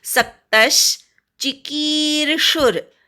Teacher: चिकीर्षुर की दीर्घ आहे, शूवर आघात घ्यायचा.